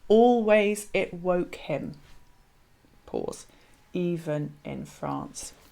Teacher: the catalexis creates a pause in the middle of the line almost as if taking a breath hesitating before kind of remembering or kind of daring to say